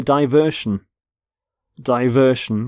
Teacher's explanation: and the noun form watch what happens to the T it goes away